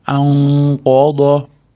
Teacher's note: Ixfo bo'lyapti. Nunda qofni chiqadigan joyga yug'orroq qilib yashiramiz. Chunki qof yog'on harf.